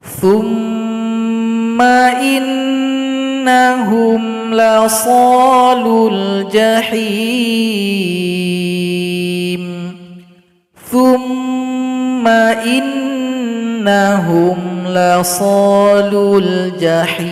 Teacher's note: mim dan nun yang bertasydid, maka didengungkan 2 ketukan masing-masing